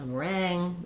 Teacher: In meringue, we have second syllable stress, and it's just like the word rang